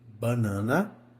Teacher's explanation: escada que ela tá reta sobe e depois desce novamente porque a sílaba tônica ela está ali no meio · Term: paroxítona